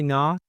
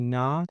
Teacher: We don't pop that T, it's a stop T at the end in the word not.